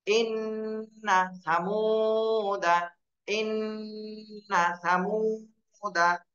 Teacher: ইন্নাতে টান দেওয়া যাবে না, এটা কিন্তু হরকত, দ্রুত বলতে হবে